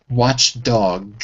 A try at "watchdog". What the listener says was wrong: Watchdog. Watchdog. Dog. Dog.